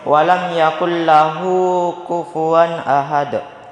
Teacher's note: Lahu di situ cara membacanya dipanjangkan selama 2 harokat